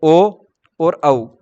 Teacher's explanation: ओ और औ, उसका उच्चारण स्थान क्या होगा, कंठोष्टम। वो कैसे हुआ, अ आ मिला और उ मिला तो ओ बना, ठीक है, तो अ आ का उच्चारण स्थान कंठ हुआ और उ का उच्चारण स्थान ओट हुआ, ओष्ठ हुआ, तो उसको मिलके ये बना, ठीक है।